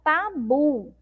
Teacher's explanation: a sílaba bu é a sílaba mais forte